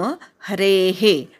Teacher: शेवटचा विसर्ग ऐकू येऊ देत